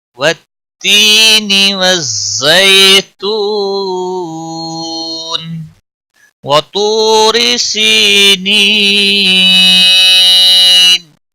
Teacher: تو کو موٹا پڑھیں گے، حروف مستعلیہ میں سے ہے۔ تو واو مدہ ہے، 1 الف کے برابر کھینچ کر پڑھیں گے۔